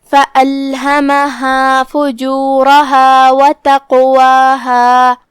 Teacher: فَأَلْهَمَهَا کلمت تقواہا میں یہاں حرف القاف ہے جو کہ قاف پہ جزم ہے، لہذا یہاں حکم ہے قلقلہ، تو ہم قاف کو ہلاتے ہوئے اور اسے بھاری آواز میں بھی ادا کریں گے کیونکہ قاف حروف التفخیم میں سے ہے.